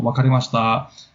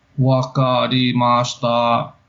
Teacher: And so he actually says it flat, which sounds crazy unnatural.